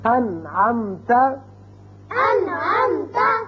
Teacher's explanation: اب نون ساکن کے بعد عین آ گیا، نون پر ہم نے اظہار کیا، نون کو ظاہر کر کے پڑھا